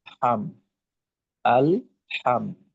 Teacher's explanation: ইজহার বা স্পষ্ট করে পড়তে হবে গুন্না ছাড়া